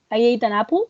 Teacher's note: Yes, I ate an apple, and it sounds like you put a J in between both words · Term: linking ja